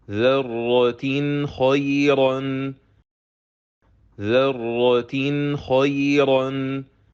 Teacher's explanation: letter Kha will cause Noon Saakinah of Tanween to be pronounced clearly, and then we pronounce letter Kha with Fatha. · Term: Izhar Halqi